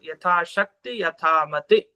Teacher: ನಾವೆಲ್ಲೇ ಸಂಕಲ್ಪ ಮಾಡಿದ್ರು ಯಥಾಶಕ್ತಿಯ, ಯಥಾಶಕ್ತೆ, ಯಥಾಶಕ್ತಿ ಮಾಡೋಂಗಿಲ್ಲ, ವಿಸರ್ಗ ಹಾಕೋಂಗಿಲ್ಲ, ಮಾಡೋಂಗಿಲ್ಲ, ಮಾಡೋಂಗಿಲ್ಲ. ಯಥಾಶಕ್ತಿ ಅಲ್ಲಿ ಕೊನೆಗೆ ಈ ಅನ್ನೋದೇ ಎಂಡಾಗ್ಬೇಕು, ಹ್ರಸ್ವ, ಅದು ದೀರ್ಘ ಅಲ್ಲ, ಹ್ರಸ್ವ.